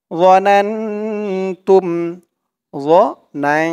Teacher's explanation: এখানে ইকফা গুন্নাহ হবে, নুন সাকিনের পরে ইকফার হরফ তা আসছে